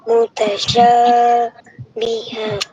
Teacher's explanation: Ha ni akan jadi mad iwat. Mad iwat tu kena baca panjang dua harakat